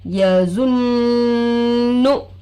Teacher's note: नून की आवाज़ को नाक में छुपाना, इसलिए जुन जुन बोल के 3 काउंट्स यानी 3 उंगलियों तक गुन्ना हम करना है।